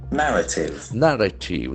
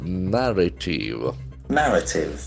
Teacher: The accent falls on the first syllable.